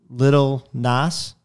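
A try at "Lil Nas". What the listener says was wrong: I think it's not Little. I think it's Lil. It's L-I-L.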